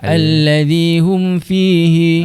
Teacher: Bacaannya pula kita perlu jelaskan bacaan mim mati tanpa dengung. >> Tanpa dengung yang dimaksudkan kat sini adalah tanpa dengung dengan kadar dua harakat tulah. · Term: izhar syafawi